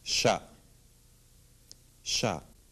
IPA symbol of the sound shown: ʃ